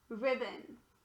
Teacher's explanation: The O here is actually a schwa